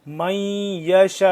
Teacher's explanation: اب یہاں پہ وقف کرنا ہے اور لمبا بھی کرنا ہے، شین الف مد زبر شا، 4 سے 5 الف کے برابر اس کو ہم لمبا کرتے ہیں مد کو، بڑی مد کو، اور ساتھ آگے حمزہ من یشاء نہیں پڑھنا کیونکہ وقف ہے.